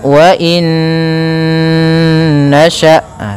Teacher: mati bertemu dengan huruf nun maka hukum tajwidnya yaitu idgham bhunah cara membacanya masukkan Nun yang pertama kepada Nun kedua kemudian ditahan gunahnya